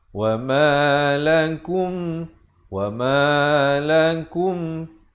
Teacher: Wa ma lakum izhar syafawi. Sempurnakan saja bunyi mim matinya, jangan dipanjangkan.